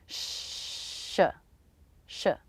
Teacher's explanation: The tongue tip is pointing up to the roof of the mouth, but it's not touching it. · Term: SH sound